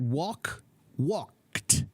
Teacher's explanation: sometimes the Ed sounds like a t